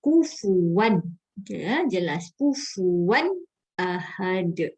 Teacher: tanwin bertemu dengan alif. Hukumnya izhar halqi. Cara membacanya dibaca dengan jelas.